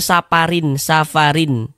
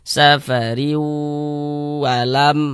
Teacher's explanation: Jadi riunya itu kita tahan, kita panjangkan sejenak sepanjang 2 harokat. Safariu alam, seperti itu. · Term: idgham bi gunnah